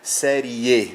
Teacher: Série, o E é a vogal, e o I aqui nesse caso semivogal, então veja que a tonicidade, né, cai sobre o E e não sobre o I, série E. Então o E é mais forte, o E é vogal, então são todos eles crescentes e não decrescentes.